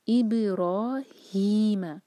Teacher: را پر فتحہ تو را بھاری اور 2 حرکہ کھینچیں گے ، مد طبیعی ہے، ابراہیم، ہا جو ہے सीने से निकालेंगे,